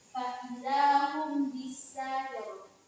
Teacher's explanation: Dinamakan ikhfa syafawi karena dalam membacanya terdengar samar dan tidak jelas.